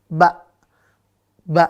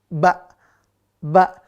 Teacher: udara sama ya tidak berhembus Ya itu dia ba ya Jadi kalau kita ngomong huruf ba ada udaranya berarti bocor itu ya Jangan sampai bocor udaranya harus tertahan